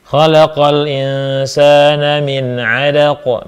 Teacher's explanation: Sebab nun sukun bertemu dengan huruf ain. Dibaca jelas nunnya. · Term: idhar